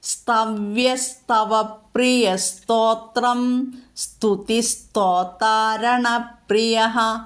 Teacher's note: ഇതിൽ താ എന്നുള്ള അക്ഷരം ഒരിക്കലും ദായായിട്ട് ചൊല്ലാതിരിക്കണം